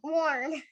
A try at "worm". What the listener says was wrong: Not worn.